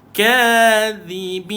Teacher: hujung lidah dikeluarkan, duduk dekat bawah gigi atas.